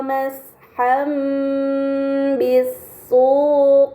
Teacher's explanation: Kemudian pada kata masham bisuqi terdapat harokat fathatain yang bertemu dengan huruf ba, ini dinamakan iklab, maka fathatain dibaca mim dengan gunnah yang dipanjangkan